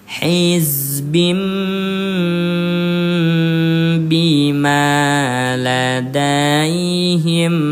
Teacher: Begitu masuk ke huruf mim ditahan dulu dua ketukan. Satu dua hizbim bimaa ladaihim fihun tuh ya.